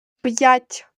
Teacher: п'ять звук п перед буквою я вимовляємо твердо Отже ставимо апостроф після букви п ть вимовляємо м'яко